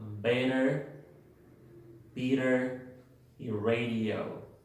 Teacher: una vocal más una D o una T y una vocal nuevamente. Se pronuncia como R, la R española en la palabra pera.